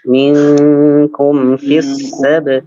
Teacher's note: Minkum, ikhfanya ditahan lagi.